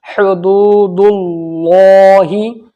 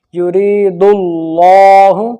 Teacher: اللہ کے لام سے پہلے پیش آ گیا دال کے اوپر تو موٹا پڑھا جائے گا۔ یرید اللہ، اللہ کے لام سے پہلے دال کے اوپر پیش تو موٹا پڑھا جائے گا۔